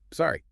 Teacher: Prosody, which is the rhythm and intonation of speech, does all the heavy lifting here. It must have a rising intonation at the very end, exactly like a question.